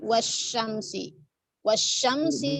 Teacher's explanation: Berarti kan alif lamnya tidak dibaca ya, lamnya tidak dibaca. Dia ada shinnya kan bertasydid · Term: syamsiah